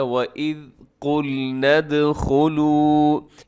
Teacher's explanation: یہاں قل میں قاف موٹا پڑھنا ہے، لیکن قاف کے ساتھ جو لام ہے، لام کا اپنے خیال کرنا ہے کہ لام کو اپنے باریک پڑھنا ہے